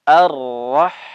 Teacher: Sudah kita sampaikan. Ha dalam keadaan sukun harus mengalir.